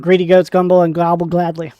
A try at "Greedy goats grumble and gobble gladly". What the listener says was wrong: Gumble? What's gumble? That's not what you said. You said gumble. No, you didn't.